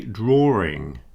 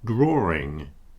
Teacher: If we put ing on the end, a lot of people say drawing, and you hear that little R appear. Instead of a W in the middle, it sounds like there's an R in the middle. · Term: intrusive R